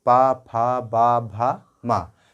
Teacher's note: पा वर्ग को बोलने में हमारे ओठ टच हो रहे हैं एक दूसरे से, पा, फा, बा, भा, मा, तो ये हमारा ओष्ठ वर्ग हो जाएगा।